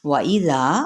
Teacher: واو ہونٹوں کی نا تمام گولائی کے ساتھ